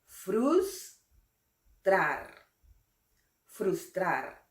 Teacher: Aquí la fuerza de voz recae en la sílaba trar. Es una palabra aguda.